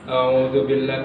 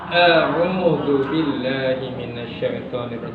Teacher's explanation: Sifatnya syiddah, kuat ketika dibaca. Jadi tidak boleh diseret kayak gitu seperti rakhawah. A'udzubillah, tidak, tapi a'udzubillahi minasyaitonirrajim.